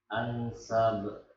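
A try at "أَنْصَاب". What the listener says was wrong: Ayo, itu ada matnya dulu, Pak. Diberikan dulu haknya, panjang ya. Ansab.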